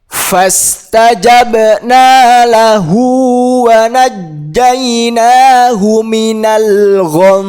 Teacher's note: yang di akhir ini ada mim yang bertasydid juga kita dengungkan.